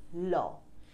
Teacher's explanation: দুই পাশ দিয়ে হাওয়া বের হয়ে যায় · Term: পার্ষিক ব্যঞ্জন ধ্বনি, পার্শ্বিক ব্যঞ্জন ধ্বনি